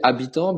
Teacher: You say habitant, but you don't pronounce the H.